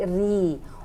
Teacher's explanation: Wabasyiri itu adalah tarqiq karena ro berbaris bawah, dibacanya tipis aja, jangan ri tapi ri.